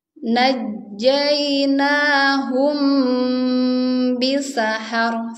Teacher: Nah, di sini ada mim sukun dan dia tidak ada tanda sukunnya bertemu dengan ba. Mimnya ini harus ditahan ya, teman-teman. Jangan sampai kita terlalu cepat membacanya. Di sini harus ada hukum gunahnya. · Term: ikhfah safawi